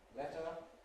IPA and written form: ˈletə (letter)